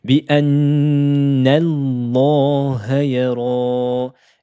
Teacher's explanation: Le hamza de liaison saute. Elle ne se prononce pas.